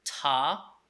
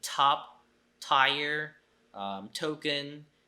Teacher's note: now we're we're in the week six so for example no t sound can be pronounced as tah with aspiration and top tire token especially an in award initial position or